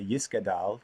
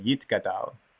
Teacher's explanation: So you may or may not know that Ashkenazi, which is pretty much Central and Eastern European Jewish ethnicities, would see this letter, the second letter over here, and that's called a saf for Ashkenazim. Saf makes a s sound. And for Sephardim, it's a taf. It makes a t sound.